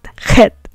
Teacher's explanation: And chet, of course, is very guttural. It's coming from the throat.